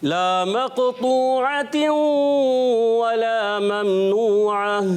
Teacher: लाम अलिफ ज़बर ला, एक अलिफ खींचना है, इसको ज़रूर खींचना है।